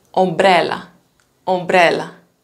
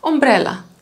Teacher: There is a short m, but much more voiced b, so that's why sometimes you don't hear it.